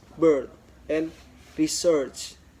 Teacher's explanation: mid-central unrounded tense vowel